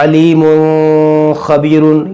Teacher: यह दो पेशों की तनवीन है। और यहाँ तनवीन के बाद एक खा है, जो एक कंठ अक्षर भी है। इसलिए, हम इसमें भी इज़हार का नियम लागू करेंगे। यानी, हम गुन्नाह नहीं करेंगे। हम इसे अलीमुन ख़बीरुन के नाम से पढ़ेंगे। · دیکھیے، یہ تنوین ہے، 2 پیش کی تنوین ہے، اور یہاں تنوین کے بعد خا، یہ بھی حروف حلقیہ ہے، تو اس میں بھی ہم اظہار کا قاعدہ لگائیں گے، یعنی ہم گنہ نہیں کریں گے۔ اس کو ہم پڑھیں گے علیم خبیر، یعنی کہ ہم گنہ نہیں کریں گے، ایسے علیم خبیر، یہ گنہ یہاں پر نہیں ہوگا۔